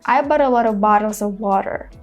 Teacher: But because we have A after bought, we make it into a flap T sound because we just connect all the words together into a one long word